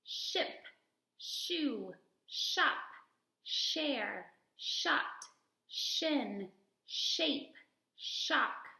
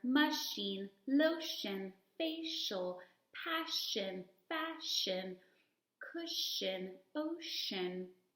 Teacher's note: together and my tongue is sitting right behind my teeth and I blow soft air and the air all comes forward and my voice is off